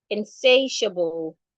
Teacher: You're stressing the say.